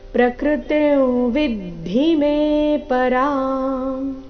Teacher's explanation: ಅನುಸ್ವಾರದ ಉಚ್ಚಾರಣೆ ನಾಸಿಕಾಂ ಆ ರೀತಿ ಬರಬೇಕು ಕಾರಣ ಮುಂದಿನ ಶಬ್ದ ವಿದ್ಧಿ ಅವರ್ಗೀಯ ವ್ಯಂಜನ ವದೊಂದಿಗೆ ಪ್ರಾರಂಭ ಆಗ್ತಾ ಇದೆ